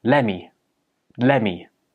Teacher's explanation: The t sound at the end of let gets dropped and it just becomes lemme.